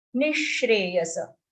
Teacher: visarga pronounced like a sh because it's followed by sh. Nishreyasa.